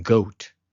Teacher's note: the letter GIMEL is a voiced velar plosive, making a /g/ sound, as in 'goat'